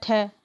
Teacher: देखो महाप्राण में आता है ठ। ठीक है? और सघोष में नहीं आता है यह। लेकिन महाप्राण में आता है।